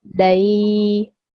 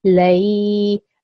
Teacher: we're going to add an a sound at the end. Okay, lay, and that sound needs to be prolonged for about 2 seconds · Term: ya leen